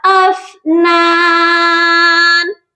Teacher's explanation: فا پر قلقلہ نہیں کیا جاتا، یہ پڑھا جائے گا افنان